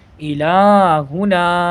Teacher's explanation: اس میں لام کو اور نون کو بڑھانا ہے. نون پہ الف مدہ ہے اور لام پہ کھڑا زبر ہے، دونوں کی مقدار دونوں کو اتنا ہی برابر کھینچا جائے گا